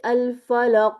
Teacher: سننے میں ایسے لگتا ہے کہ فتحہ کی حرکت ادا ہو رہی ہے اینڈ پہ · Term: کلکلا